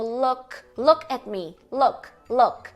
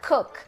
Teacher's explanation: É um U curto, né? Então pode ver que a tua língua tá um pouquinho mais baixa entre um U e o O.